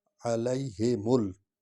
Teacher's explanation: ہی کو الگ پڑھنا ہے، میم کو لام کے ساتھ ملانا ہے، لام پر جزم ہے